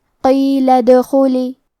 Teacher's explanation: کلمت ادخلی میں حرف الدال پہ جزم ہے تو یہاں دال کا حکم ہے قلقلہ، ہم یہ حرف کو ہلاتے ہوئے یہ کلمہ کو پڑھیں گے۔ حرف الخاء کو موٹی آواز میں پڑھیں گے، آخری میں لام کے نیچے زیر ہے تو ہمیں زیر کو ظاہر کرنا ہے۔